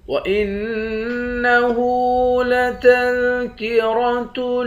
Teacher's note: حمزے کو نون مشدد کے ساتھ ملا کر نون پر غنہ کریں گے۔